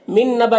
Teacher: نون کو نون سے ملا کر غنہ کے ساتھ میں پڑھیں گے۔ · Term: ادغام ناقص